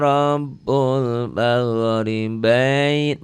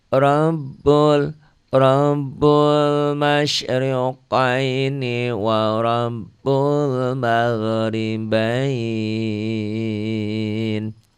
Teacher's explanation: Bain kayak diptong ya. A dan i ai, a dan u au itu ya. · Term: harfulin